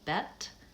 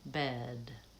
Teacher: For example, in the words bet and bed, the only difference between those two words is that one ends with the voiceless T and the other ends with the voiced D. And you'll notice as I'm saying those words, I tend to lengthen on the second vowel for bed.